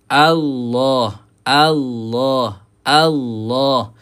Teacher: elakkan membaca dengan vokal U sebab ini adalah hamzah ataupun hamzah wasal digunakan vokal A ah kena ada a dulu.